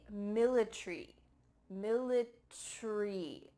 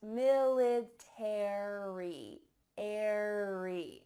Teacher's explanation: in british english they often cut out the a so instead of military it would be military military that a is just gone but in american english each of those letters are pronounced military airy so let's listen to this clip one more time